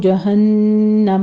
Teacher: جہنم میں غنہ واجبہ ہے، 2 کاؤنٹ کیجئے گا